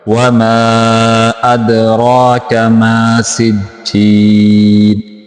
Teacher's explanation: یہاں دال کے اوپر کلکلا کریں گے، را کو لمبا کر کے پڑھیں گے